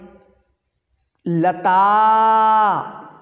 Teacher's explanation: पुकारने में आ जो है आ की साउंड है वह तीन मात्राओं के बराबर खिंच गई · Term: प्लुत